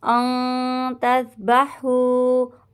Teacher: اخفا کا گنہ ہوگا، نون ساکن کی آواز کو چھپائیں گے